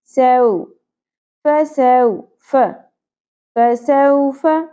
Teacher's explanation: سو زبر کے بعد واو ساکن حرف لین نرمی سے ادا ہوگا، سو نہیں پڑھنا.